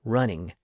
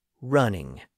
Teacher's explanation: when we say a word like running we stress the first syllable